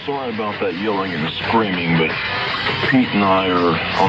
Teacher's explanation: He's got a glottal fry going on.